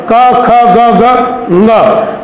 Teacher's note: तो यहां पर अनुस्वार यहां लगा हुआ है, उसके बाद में क है, तो क वर्ग का पांचवा व्यंजन ङ। इसका उच्चारण कई लोग अशुद्ध करते हैं, ड कर देते हैं, जबकि ड नहीं है, इसका उच्चारण ङ है, क ख ग ग ङ।